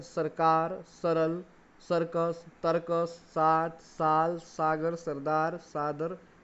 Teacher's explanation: स, एक सामान्य वर्ण है जिसका उच्चारण स्थान दंत है।